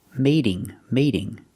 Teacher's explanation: now the T is between vowels, so it makes a fast D.